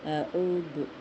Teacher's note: دال کی آواز ثنایا اولیہ پر زبان کی ٹپ نکال کر جلدی ادا کریں گے